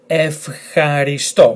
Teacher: emphasis on the last letter